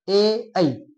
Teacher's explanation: ए ऐ हे कोणत्या मुखाच्या भागातून बोलले जातात, कंठ प्लस तालू. कंठ प्लस तालू याच्यातून बोललं जातं. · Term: कंठ तालव्य